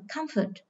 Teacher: các em thấy trọng âm rơi vào âm tiết thứ nhất